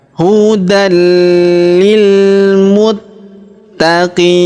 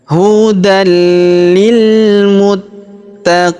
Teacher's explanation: Huruf qi kita panjangkan 2, 4 atau 6 harokat karena di depan huruf qi terdapat ia sukun sebelum huruf pemberhentian, dan huruf pemberhentian huruf na kita sukunkan atau kita matikan.